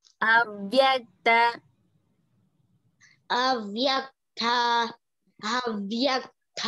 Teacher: त is अ अल्प प्राणावली don't stress it